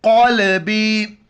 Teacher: بڑی قاف ہے موٹا کر کے پڑھیں گے